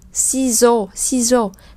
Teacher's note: Đối với người Pháp thì nó đều là một âm tiết cả. Ciseaux thì các bạn để ý là âm S này không được đọc là S mà được đọc là Z